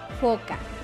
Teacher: Es fricativa, labio dental, sorda